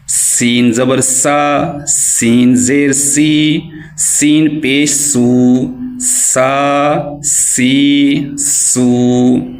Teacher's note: سین جو ہے یہ سیٹی والا حرف ہے، اس کو ہم سیٹی سے ادا کریں گے